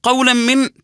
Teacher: قولا من تنوين بعده ميم يكون حكم الادغام بغنه